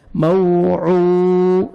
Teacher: عین کو اپنے صحیح مخرج سے ادا کریں گے اور 1 سیکنڈ کھینچنا ہے، واو مد ہے